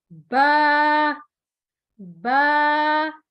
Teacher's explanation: یہ دونوں ہونٹ بند ہے، جب ہم ان کو کھولیں گے تو حرف با ادا ہوگا۔